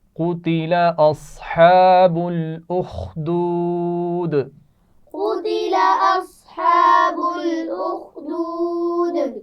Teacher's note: قتل قاف کو موٹا پڑھیں گے، اصحاب صاد کو موٹا پڑھا جائے گا · اصحاب الاخدود ملا کر پڑھا جائے گا، خا کو واضح رکھنا ہے اور آخر میں دال پر قلقلہ کیا جائے گا.